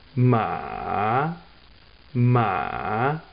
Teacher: my third tone it starts lower than the second tone lower than the first tone of course and goes even lower and then comes up